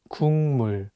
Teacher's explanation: it changes the pronunciation from a g sound to an ng sound and you need to read it as kung mu · The consonant 기역 is for G sound in English, so you can read it as 국. But it's paired with the nasal sound 미음, so it changes the pronunciation from a G sound to an NG sound, and you need to read it as 국물.